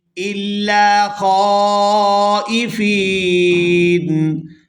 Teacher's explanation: یہاں پر بھی وقف کریں گے تو وقف کی صورت میں نون جو ہے یہ ساکن ہو جائے گا اور فا کو یا ساکن اور نون ساکن کے ساتھ ملا کر پڑھیں گے